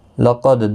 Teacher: دال ساکن پر قلقلہ ہوگا وقف کی صورت میں